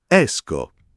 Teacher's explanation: esco con la e chiusa